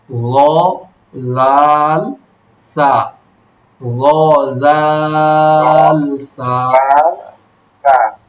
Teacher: জিহ্বার আগা সামনের উপরে দুই দাঁতের এর একবার সহজ, আগার সঙ্গে লাগায়। জিহ্বার আগা সামনের উপরে দুই দাঁতের আগার সঙ্গে লাগাইয়া উচ্চারিত হয়।